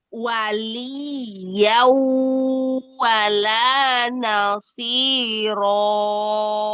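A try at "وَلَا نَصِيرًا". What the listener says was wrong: Wala nasiro. Dua harokat aja roknya. Ya, jadi hati-hati kalau membaca tempo lambat jangan tamtid ya.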